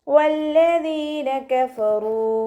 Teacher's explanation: വാവ് ഉച്ചരിക്കുമ്പോൾ ചുണ്ടുകളൊന്ന് വട്ടത്തിൽ പിടിച്ചിട്ട് ഉച്ചരിക്കാൻ ശ്രദ്ധിക്കുക.